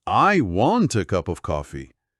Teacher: Ao colocar a batida forte em I, uma palavra de função que normalmente seria fraca, você quebra o ritmo esperado.